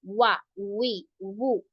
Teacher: वाओ दोनों होठों को गोल करके, बंद नहीं करना आपने, तो दोनों होठों को गोल करके जब आपने अदा किया तो वो हो गया वाओ, वा, वी, वू।